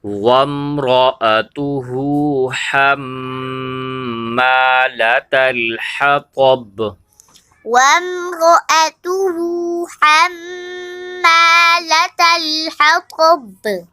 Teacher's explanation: آپ نے را کو موٹا کرنا ہے، ہا کو ایک الف کی مقدار کھینچ کے پڑھنا ہے، میم کے اوپر غنہ ہوگا اور الف سے پہلے زبر ہے، الف مدہ بھی ہے، اور